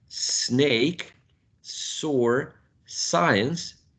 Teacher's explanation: you should not feel any vibration in your throat meaning your vocal cords are not vibrating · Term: voiceless consonant sound